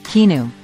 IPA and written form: kiˈɑːnuː (Keanu)